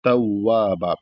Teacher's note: ता को जब वाव में मिलाएंगे वाव मुशद्द है तो इसको इस तरीके से थोड़ा दबाकर मिलाएंगे क्योंकि तशदीद को दबाकर ही पढ़ा जाता है।